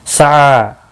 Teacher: اس کے اوپر کھڑی زبر بھی ہے، ایک الف کے برابر کھینچ کر پڑھیں گے۔ سعی، عین کے اوپر کھڑی زبر ہے، ایک الف کے برابر کھینچ کر پڑھیں گے